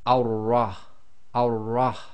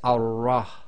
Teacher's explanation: you cannot say al and then the ra, because the shadda has to join to something